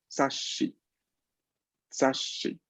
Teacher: Entonces, yo aquí tengo sa, yo aquí tengo shi. Shi empieza con el sonido sh. Entonces, ese es el que yo duplico. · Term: doble consonante